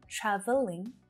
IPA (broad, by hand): ˈtræv(ə)lɪŋ